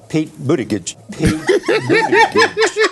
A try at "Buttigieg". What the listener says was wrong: Hard G, not right. It's a soft G. Buttigieg. So that's how he says his own last name,